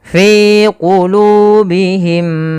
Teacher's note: Kemudian di lafal mim ketemu mim, apabila ada mim mati bertemu mim teman-teman, Ini sudah kita bahas bahwasanya di situ adalah hukum bacaan idgham mimi. Cara membacanya adalah kita tahan dulu suara mimnya yang pertama, masukkan kedua dan ditahan.